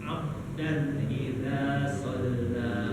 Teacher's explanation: Ba di situ kolkolah. Di kolkolah itu dipantulkan.